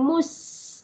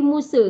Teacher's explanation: huruf Sin Sin sukun ataupun Sin mati ada sifat desir desir ataupun berdesir